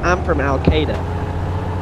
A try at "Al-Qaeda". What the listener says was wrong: It sounds like you're saying Sega. No, it's like a Star Wars saga, not Sega.